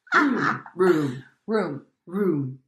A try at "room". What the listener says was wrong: Don't make it so long. Room.